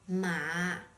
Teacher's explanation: when you assign the third tone to it it's pronounced ma with a low tone just make sure your tone is as slow as possible okay